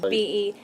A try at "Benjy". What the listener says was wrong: That's a J. Do it again.